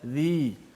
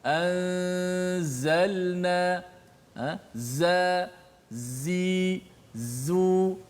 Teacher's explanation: So sifat safir itulah suara desiran yang kuat.